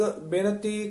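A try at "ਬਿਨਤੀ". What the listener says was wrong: ज्यादा बेनती पद भी आउंदा है, किते किते बिनती आउंदा है, इत्थे बेनती नहीं कहना, इत्थे कहना बिनती, नाले नन्ना शुद्ध बोलना है।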